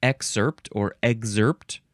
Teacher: I pronounce with a emphasis on the first syllable